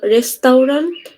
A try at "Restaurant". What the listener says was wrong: Restaurant, না? ওই টিটা উচ্চারণ হবে।